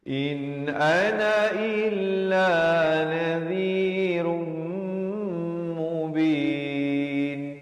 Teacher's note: Di sini ra baris dua di depan, dhammatain nadhirun. Asalnya nadhirun, datang mim jadi nadhirum. Jadi dengungkan dua harakat.